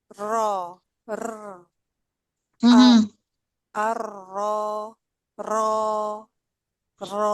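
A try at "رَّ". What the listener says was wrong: Kurang diangkat sedikit pangkalnya. Pangkal di belakang.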